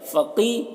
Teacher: قاف کو پر پڑھیں گے اور یہاں پر یا مدہ ہے، ایک الف کے برابر کھینچ کر پڑھیں گے